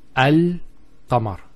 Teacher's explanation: the al is where the teeth and the tongue come together, and the qaf, aq, comes from the throat, which is far from the articulation point of the lam.